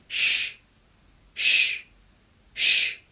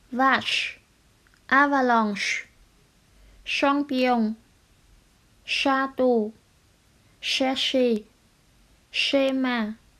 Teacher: Đầu lưỡi cong lên hết mức nhưng không chạm vào vòm họng, sau đó nói âm s như trong tiếng Việt và đẩy nhiều hơi từ cổ họng đi qua hàm răng. Chú ý cổ họng của chúng ta không rung vì đây là một âm vô thanh. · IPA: /ʃ/